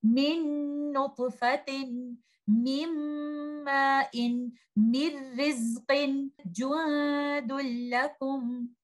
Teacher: In this example, if we see juadul lakum, noon sakina hidden in tanween is completely merged into letter lam. Nothing is left from letter noon sakina, and this is called complete merging. Letter noon sakina hidden in tanween has completely merged into letter lam.